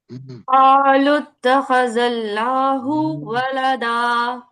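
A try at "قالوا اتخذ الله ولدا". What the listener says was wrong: یہ بہتر ہے لیکن لفظ اللہ پہ آپ کو مزید کام کرنا ہے. حمزہ کو لائٹ کریں. اللہ.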